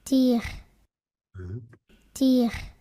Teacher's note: So fairly long, well, with your post-vocalic uvula R, and T with relatively little voice onset time, just like in French.